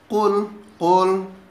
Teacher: Qul huruf qaf, makhrajul hurufnya yakni di pangkal lidah.